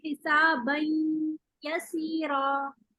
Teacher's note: एक दफा तो हम नाक में आवाज लेके जा रहे हैं, नून पढ़ रहे हैं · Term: गुन्ना